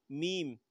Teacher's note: میم کا مخرج دونوں ہونٹوں کے ملنے سے میم ادا ہوتا ہے